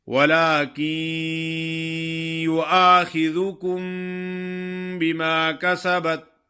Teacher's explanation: جب ادا کریں گے تو نون کی جو غننے والی صفت ہے وہ باقی ہوگی، غنہ ہوگا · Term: ادغام